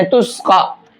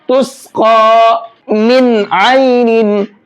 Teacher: نارا حامیہ، تسقی من عین آنیہ، تسقا، قاف کو پر کر کے بھی پڑھیں گے اور ایک الف کی برابر کھینچ کر کے بھی پڑھیں گے، کیونکہ قاف کے اوپر کھڑا زبر ہے